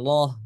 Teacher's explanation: lamnya ditulis dibaca atau disebut dengan loh seperti itu ya, baca tebal